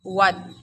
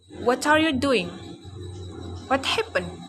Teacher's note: Consonant sound labiovelar is w. Product when the back part of tongue contact the soft palate in lips, and lips also come close to each other.